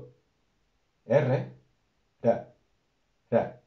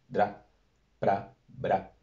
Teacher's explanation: La R en el latín va a tener un sonido bastante suave, no va a ser una vibración múltiple, no va a ser R, sino como cuando usamos la R en conjunto con otras letras. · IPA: ɾ